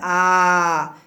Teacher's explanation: जब बोलेंगी आप या बोलेंगे तो जीभ का मध्य भाग ऊपर उठेगा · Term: मध्य स्वर